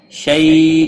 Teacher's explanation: یا لین ہے، تھوڑا نرمی کے ساتھ کھینچ کر ادا کریں گے۔